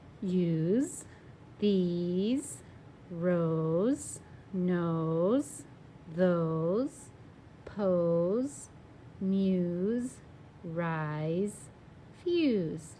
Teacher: So that E is hopping over that one consonant, that S, to make the vowel say its name. And then that S is acting like a Z. We don't spell it with a Z, no Z's, but it has that Z sound.